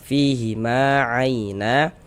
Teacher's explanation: Maka huruf yang memiliki tanda baca fathahnya dibaca panjang, sehingga ma dibaca panjang. Madu tabi'i panjangnya 2 harokat sesuai dengan rumus 3 yang warna hitam.